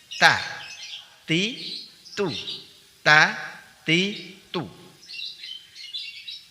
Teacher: Ujung lidah dari arah punggung dan menempel pada gusi dua gigi seri atas.